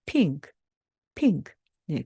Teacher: 뒤에 오는 것은 그저 나머지 소리만 가지고 살짝 소리를 내기 때문에 핑크 핑크. 네, 크는 마치 나 혼자 듣는 것처럼 아주 작게 소리를 내주시면 되겠습니다.